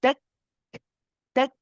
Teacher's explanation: Those of you, again, QSL students will know this already, that the shidda element comes first. First, you stop the sound of your voice, then the hums comes after, the breath comes later.